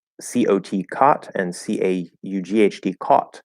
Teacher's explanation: For those of you who don't know, the cot merger is where there's ah and ah, and in Western American English, which is like almost half the country, the ah got moved back and the ah disappeared, and so we just have the one sound.